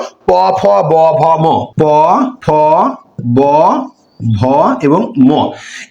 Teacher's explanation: ঠোট দিয়ে যে ধ্বনিগুলো উচ্চারণ হয় সেগুলো হচ্ছে দ্বিষ্ট